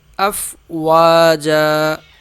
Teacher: آگے ہے افواجا، فا تو ہو گیا ساکن، واو کو 1 الف کے برابر کھینچ کے پڑھیں گے